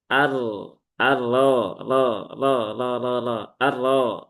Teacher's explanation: maka r-nya harus dibaca dengan tafkhim ya tebal dengan cara apa ya ini ya di sini ee menaikkan pangkal lidah ar ar arro ro ro ro ro ro ro arro ah gitu ya bukan arro aro ah bukan bukan seperti itapi arro arro Rab, rab, rab, rabbuhu. · Kalau muncul sifat khofa haknya akan menjadi samar maka ini harus diperjelas haknya rabbuhu dan roknya ini harokatnya fathah, maka roknya harus dibaca dengan tafkhim ya, tebal. Dengan cara apa? Ya ini ya, di sini menaikkan pangkal lidah.